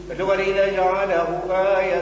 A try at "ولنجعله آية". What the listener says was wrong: مد الهاء من دودة. مدها علشان ما نقولش ولنجعله آية، قول ولنجعله آية. هو آهو تم واو صغيرة بعدها.